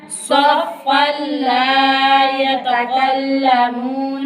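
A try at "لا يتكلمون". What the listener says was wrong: یتقل نہیں پڑھنا، یتکلمون،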